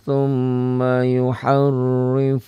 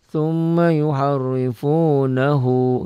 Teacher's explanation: Kalau berhenti dia jadi pendek. Tapi kalau disambung, diwasol, digabung panjang.